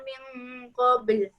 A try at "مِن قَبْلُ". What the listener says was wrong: Dia jangan nipis dia punya qalqalah, jangan ruziqna. Qalu hadza alladhi ruziqna min qabl.